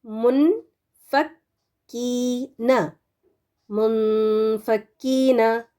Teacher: نون کا پورا پروننسیشن نہیں کیا جائے گا جب غنہ ہوگا اس میں